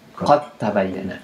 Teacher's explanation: Tapi karena dal dengan ta ini bertemu, dal dengan ta ini bertemu, ta dengan dal ini satu makharijul huruf, yaitu ujung lidahnya itu berada di perbatasan gigi dan gusi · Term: idgham